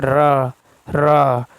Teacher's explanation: जिह्वा में 2-3 बार कंपन होता है, ठीक है, प्रकंपी व्यंजन कहते हैं।